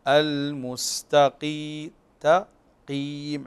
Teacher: عندنا التاء مرققه والقاف مفخمه فلهذا نحافظ على صوت الحرف من عدم بيانه هنا مفخما لمجاورته